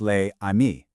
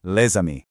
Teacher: So, les amis isn't pronounced les amis. No, that S jumps over and it becomes one single fluid sound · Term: liaison